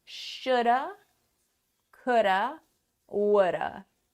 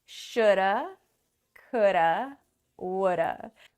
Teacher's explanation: Should is stressed and have is not. And that is why it becomes shoulda, because the have becomes so small when we stress should that it just gets smaller and smaller from have to should we can also apply this to would have and could have.